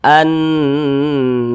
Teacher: dia ghunah maka cara membacanya itu digunahkan digunahkan tu ya didengungkan jadi suaranya itu kita tahan kita panjangkan sejenak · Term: ghunah musyaddadah